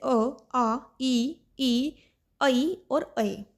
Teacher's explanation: जब आप उनका उच्चारण करते हो तो आप के जो होठों की बनावट है वो सर्कल नहीं बनती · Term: आवृत मुखी स्वर